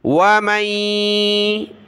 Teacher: ومن واو زبر وا, میم آگے یا آ رہا ہے اگلے پیج پر, اس سے ملے گا, نون کی وجہ سے ناک میں آواز پیدا ہوگی